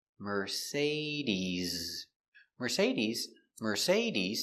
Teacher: Use a vibration with your Z sound.